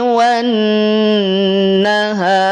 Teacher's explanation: ketika berhenti di lafadz an-nahar, huruf ra yang semula kasrah dia akan berubah menjadi sukun. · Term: Sukun aridi